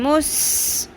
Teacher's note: سیٹی کی آواز باریک رکھنا ہے، پر نہیں کرنا